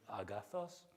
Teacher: the voice went up in pitch on the accent a bit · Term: pitch accents